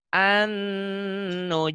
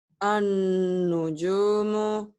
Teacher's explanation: An ditahan ya. Ditahan Ya. dengung ke hidung.